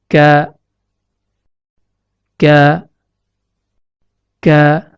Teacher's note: Makhraj huruf kaf terletak pada pangkal lidah yang menempel pada pertemuan antara langit-langit lunak atau yang diistilahkan dengan palatum mole dengan langit-langit keras atau yang diistilahkan dengan palatum durum.